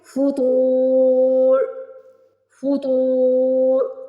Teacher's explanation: تو کو موٹا پڑھیں گے، پہلے تو کو کھینچ لیں گے، پیش کے بعد واو ساکن آ رہا ہے، پھر را کی آواز نکالیں گے